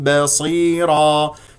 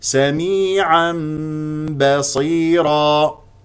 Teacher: تنوين جاء بعد التنوين حرف الباء وهو حرف الاقلاب تقلب الى ميم بغنه بمقدار حركتين سميعا سميعا سميعا بصيرا بدون كز على الشفتين عند ن ميم